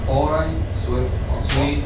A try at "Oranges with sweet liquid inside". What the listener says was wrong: Wait. Look at that S on the end. Oranges.